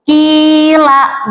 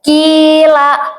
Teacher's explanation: Ya mati sebelumnya ada huruf yang berharokat kasroh. Panjangnya satu alif. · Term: matobi'i